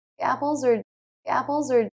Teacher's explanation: the z sound of apples really does link into that word